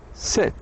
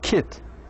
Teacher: you should say I is a close front vowel